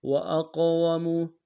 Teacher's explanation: قوف کو موٹا ادا کریں گے، قوف کو قلقلہ سے قلقلہ کریں گے